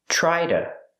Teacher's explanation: To is pronounced duh. A fast D.